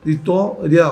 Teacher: E na vitória, nós temos ditongo. Vitória, o I e o A vão formar ditongo. É um ditongo crescente oral.